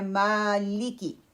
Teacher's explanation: ماں کو لمبا کرنا ہے، لی کی کوئک پڑھنا ہے